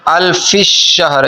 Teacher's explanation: فا کو شین کے ساتھ ملاتے ہیں سختی کے ساتھ اور شین پر تشدید پڑھ دیتے ہیں